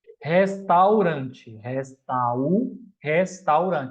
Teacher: ditongo do A para o U, ditongo decrescente